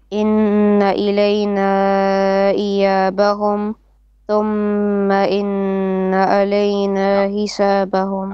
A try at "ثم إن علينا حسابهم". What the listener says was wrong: علينا. Mim shadda, nun shadda, make it more pronounced. Two beats of ghunna at least. Hisa, bintu ha.